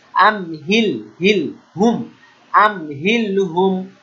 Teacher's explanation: মিম সাকিনের পরে হা এটা মিম সাকিনের ইজহার স্পষ্ট